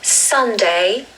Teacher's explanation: So we stress the first syllable, which is sun.